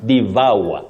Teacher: It has what we call a triphthong. That is a glide on 3 vowel sounds.